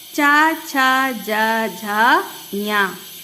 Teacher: जीभ के ऊपरी भाग को हम तालु कहते हैं। जब हम इनका उच्चारण करते हैं तब हमारी जीभ कहाँ स्पर्श होती है? तालु में स्पर्श होती है।